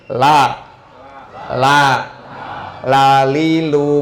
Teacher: lam itu adanya di ujung lidah ya maksudnya di ujung lidah ujung lidah agak melebar sedikit ditempelkan kepada gigi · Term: huruf lam